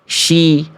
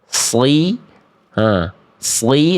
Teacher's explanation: Bunyinya pasti beda antara sli, sli dengan shi. Yang shin itu tengah lidahnya yang naik. Kalau shod itu fokusnya di ujung lidah.